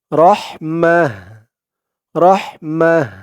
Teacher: অকফের সময় যদি গুলতা থাকে তখন সেই গুলতাটা হা হয়ে যায় গুলতাকে হা উচ্চারণ করতে হয় আগের অক্ষর দিয়ে ওই গুলতাকে হা